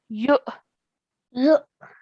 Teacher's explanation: we're going to join the ya to the Hamza Sakin with a soft jerk sound.